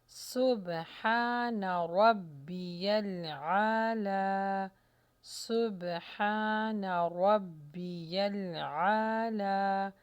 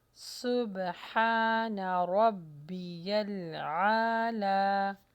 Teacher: سین کے مخرج کو اچھی طرح لگائیں، ہا کو دیکھیے، رو کو موٹا کیجیے، عین کا مخرج بھی ہے